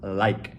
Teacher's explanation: L 발음은 훨씬 혀 끝이 앞으로 나와야 돼요. 천장에다가 닿는 게 아니라 이에다가 닿는 거예요.